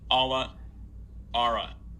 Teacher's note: I initially transcribed these with an ah because that was what I was targeting, but when I actually say them, it kind of becomes more like a wedge.